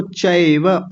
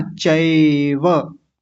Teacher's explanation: अयकार की मात्रा है, अय बोलते हैं, अय